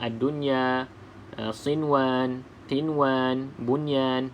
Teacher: Nun ada tanda mati maka kita baca dengan izhar iaitu bacaan jelas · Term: izhar mutlak